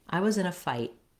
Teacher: I was in a fight, where I don't release it. I don't say fight with a clear aspirated T at the end. · I'm actually going to stop that T. I was in a fight, where I don't release it.